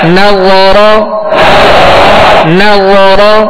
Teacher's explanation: نون باریک، وا پر اور نرمی کے ساتھ، اور را کو پر پڑھیں گے